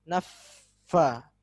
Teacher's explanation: fa memiliki sifat namanya rakhwah juga. Jadi ditahan dulu.